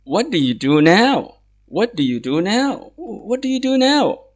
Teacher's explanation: because this is the question, it started by what, so it's going to take the normal tone. It's going to be falling down. It's a falling tone.